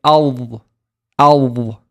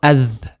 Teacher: We need to raise the back of the tongue to make the letter heavy and say al, al. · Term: heavy letter